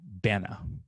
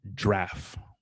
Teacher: you might find that banana is squished into bana, or giraffe is squished into draff, 1 syllable